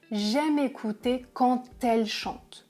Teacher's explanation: je fais la liaison, je prononce « te »